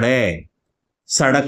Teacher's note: जब हम ड़ और ढ़ का उच्चारण करते हैं तो आप देखेंगे कि जीवा झटके के साथ नीचे गिरती है जैसे जीवा को धक्का लगाया गया हो फेंक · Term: उत्क्षिप्त